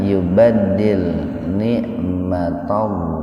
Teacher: Lafdzul jalalah didahului oleh fathah, jadi dibaca tebal. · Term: tafhim